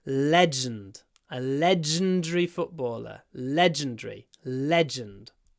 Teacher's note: Stress is on the first syllable, which means we do a long L.